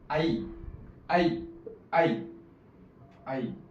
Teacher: तयार करायचा बघा एकत्र उच्चार करा आई ऐ बरोबर आता आई आ अधिक इ छोटी किंवा मोठी येऊन आई तयार झालाय उच्चार करून बघा आई आई आई आई दोन स्वर एकत्र येऊन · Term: संयुक्त स्वर